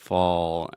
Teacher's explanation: it's not totally like fo but you have fall and then that dark l sound